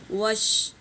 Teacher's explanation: تفشی یعنی اسپریڈ، آواز کا منہ میں پھیلنا۔ تو یہ شین میں ضرور آنا چاہیے آواز کا پھیلنا۔